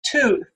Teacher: And, we're going to round our lips for that oo, but that rounding tends to happen early, anticipation of that sound, so that our t is produced with rounded lips. Right, and we can write that by putting a little W symbol that sort of represents the W sound, which is also something we have to produce with rounded lips. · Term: rounded allophones